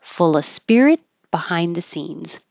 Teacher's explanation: Fulla, this is where you can drop the V and the of and just say So when there's a consonant after of, you can skip the V. Fulla, full of spirit behind the scenes, and hold the T in spirit because there's a consonant after it.